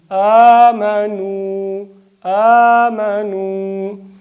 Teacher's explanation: الف په اندازه دوه حرکته اوږدوالی به پرې کوو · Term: مد الف